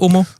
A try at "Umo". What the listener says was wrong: Umo. It's sumo, as in umo, rather than Omo, as in homo.